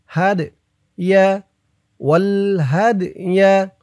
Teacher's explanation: এই দালটা কলকলার হরফ, ধাক্কা দিয়ে পড়তে হবে।